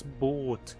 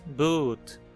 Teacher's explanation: A vogal é de fato algo como uma quase posterior fechada arredondada. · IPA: [bu̘t]